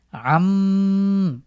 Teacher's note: প্রথম শব্দটি দেখুন, আইন মিম জবর আম, আম। এই যে আমি মিমের উপরে থামছি এবং নাকের নিচে দিয়ে গুন্না করে পড়ছি, এটাই হলো ওয়াজিব গুন্না।